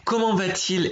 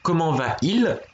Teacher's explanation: la raison de ce T euphonique, pardon, c'est le plus souvent pour éviter d'avoir deux voyelles qui se collent, parce qu'on n'aime pas on n'aime pas trop comment ça s'appelle, les diphtongues en français.